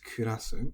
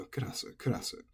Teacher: There were some cases where it ended up sounding a bit more like kurasu, but I believe this was just because the ku often loses a lot of its pronunciation. It becomes almost devoiced kurasu, but the energy is always right here on the ku